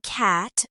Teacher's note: Try saying cat with a wide open A